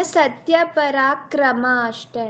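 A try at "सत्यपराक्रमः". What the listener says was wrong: ಪರಾಕ್ರಮ ವಿಸರ್ಗ ಇದೆ ಮೇಲೆ ಹಾಕೋ ವಿಸರ್ಗ.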